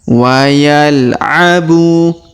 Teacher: Huruf bu kita panjangkan 2 harokat karena terdapat waw sukun di depan huruf bu ya. Alifnya tidak dibaca lagi.